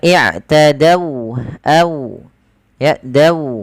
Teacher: Ada huruf waw yang dia sukun di dari fathah. Ini kita namakan dengan bacaan lin, yang dimana dia lembut di dalam melafalkan wawnya dan sempurnakan waw.